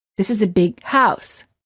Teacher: big however you wouldn't say this is a big house instead you would hold the g sound of the word big and you would say this is a big house word groups